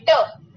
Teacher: तो जीभ पूरी मुड़ जानी चाहिए और झटके के साथ। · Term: मूर्धन्य